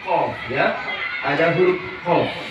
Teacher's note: Pertama, pangkal lidah, yaitu langit-langit belakang.